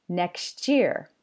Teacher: a final t sound in a word and an initial y sound in the following word combine to make a ch sound at the boundary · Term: coalescence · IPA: /ʧ/